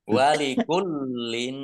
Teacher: lamnya dibaca double, ada tasdidnya.